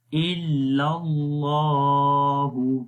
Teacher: لام کو موٹا پڑھیں گے، پہلے لام کو باریک پڑھیں گے